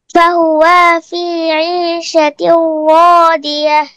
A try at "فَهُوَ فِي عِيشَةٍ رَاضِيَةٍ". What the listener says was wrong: ফাহুয়া, টান হবে না, এখানে তো কোনো আলিফ নেই, তাহলে কিভাবে পড়তে হবে? ফাহুয়া ফি আইশাতির রাদিয়া। আইশাতির র একটু মোটা হবে, কি হবে? হ্যাঁ, ফাহুয়া ফি আইশাতির রাদিয়া।